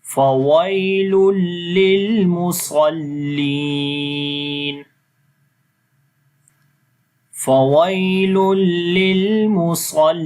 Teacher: Swad we read in heavy sound and li we long due to ya madda.